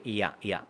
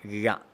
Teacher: ഴ എന്ന് പറയുമ്പോൾ വളയും, മറ്റത് യ യ. യാ പറയുമ്പോൾ നാവ് മുകളിലേക്ക് പോവില്ല, ഴ പറയുമ്പോൾ മുകളിലേക്ക്.